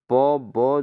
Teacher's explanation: प ब जो है दोस्तों ये अल्प प्राण है